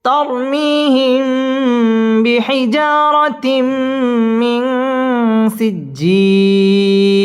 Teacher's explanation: মিম সাকিনের বামে বা আসলে ইকফায়ে শাফাঈ গুন্না করে পড়তে হবে